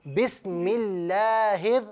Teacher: لفظ اللہ کی لام کو باریک پڑھیے